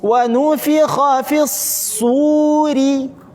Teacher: Ditekan sadnya karena tasydid, kemudian safir.